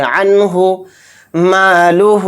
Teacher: عنہ، عنہ اس میں اظہار کا بھی قاعدہ ہو رہا ہے، یعنی نون ساکن کے بعد ہا آ رہا ہے، اور ہا اظہار حلقی کے 6 حروف میں سے ایک حرف ہے، اس لیے اس نون کو ظاہر کر کے پڑھیں گے